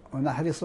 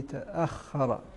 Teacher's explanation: ونحرص كذلك على ترقيق الهمز وعدم تفخيمه